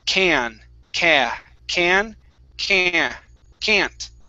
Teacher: I move that vowel sound a little bit further up in my mouth.